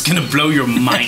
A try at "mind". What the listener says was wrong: I don't like the way you said mind. Mine should only have one syllable. You put like 13 on that.